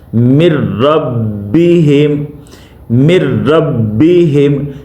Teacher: इदगाम बिला गुन्ना, यानी नाक की आवाज़ के बगैर पढ़ना है। · यानी गुन्ना नहीं करना, जाम तो कर रहे हैं मगर यहाँ पे गुन्ना नहीं होगा।